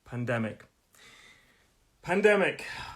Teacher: And it's a 3-syllable word. Pandemic. Stress is on the 2nd syllable.